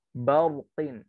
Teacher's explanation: Yang tebal ro-nya bukan ba-nya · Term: ro tafhim